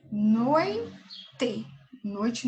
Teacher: Noite não é um hiato, né? Eu tenho noi, fica junto, o O e o I. Então, não é o hiato.